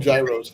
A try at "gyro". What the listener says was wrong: It's not gyros, gyro.